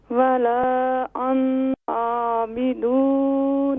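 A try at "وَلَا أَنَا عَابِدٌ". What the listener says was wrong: انا نون کو نہیں کھینچیں گے. ولا انا عابد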